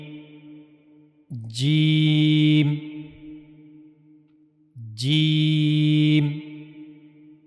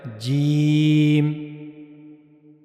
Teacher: جیم کو ادا کرنے کے لیے زبان کا درمیانی حصہ اور منہ کا اوپر والا حصہ استعمال ہوتا ہے۔